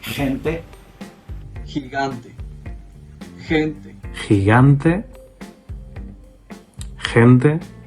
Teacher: when they say the GE or the GI, it has sort of like a, like some friction in the throat